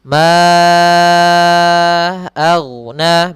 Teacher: mad jaiz munfasil, panjangnya 4 harakat